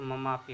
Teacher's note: देखो जैसे मम प्लस अपी, मम में अ है, अपी में भी अ है, दोनों आपस में मिलकर क्या हो गए, आ हो गए, तो मम आपी हो गया।